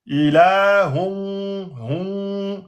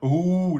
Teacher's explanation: Ilahun wahidun. Ouais, vous essayez de faire une nasalisation, donc vous essayez de faire sortir le son des cavités nasales du nez. Ilahun, hun, c'est pas hou, hein, vous sortez pas les lèvres.